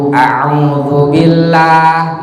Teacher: Ain itu wastul khalqi, tenggorokan tengah-tengah tenggorokan.